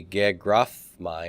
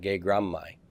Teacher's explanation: the MU here which is nasal as well as labial and it's going to force a assimilation to a nasal labial consonant so it becomes fully assimilated here so it's not going to